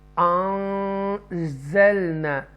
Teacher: نون ساکنہ کے بعد اخفا لیٹر ہے، تو یہاں پر گنہ ہوگا